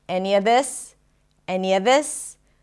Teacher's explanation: He connects the any with a schwa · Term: intrusive sound